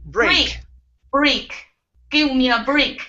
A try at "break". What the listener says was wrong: Now, right here, what you're saying is break. instead of with an E, start off with an A sound. A, break. Okay, so what you're saying is an E sound. You're going straight to an E. You're saying break.